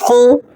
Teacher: خو حروف مستعلیہ میں سے ہے، یعنی ہر حال میں موٹے پڑھے جانے والے حروف میں سے